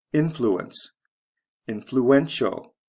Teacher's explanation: next one influence influential spelling change from c e to t-i-a-l the syllable stress goes from the first to the third syllable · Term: stress shift